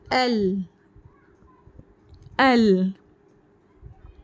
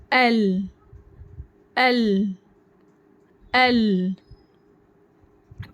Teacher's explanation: तो जुबान की नोक ऊपर के दांतों के मसोड़ा से लाम रूफ अदा होता है लाम को हम बारीक आवाज में पढ़ेंगे तो इसकी प्रैक्टिस करें